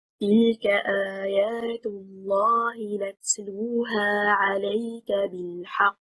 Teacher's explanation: The correct performance, stressing on حركة الحاء, and al-qaf has a shadda. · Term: an-nabr